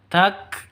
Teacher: Kafnya harus ada hamznya, harus ada nafasnya keluar.